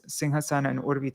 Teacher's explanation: they connected these two words Singh Hassan and urvi together because whenever a Sanskrit word ends with a short a and then another word begins with a u then they both connect together and it becomes an o